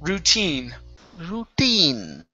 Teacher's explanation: The stress is on the very end.